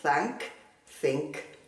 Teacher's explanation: La TH también puede pronunciarse con un sonido fuerte que llamamos sordo, que no vibra